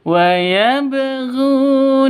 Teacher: Panjang dua ketukan karena ada wau mati diawali dengan dommaah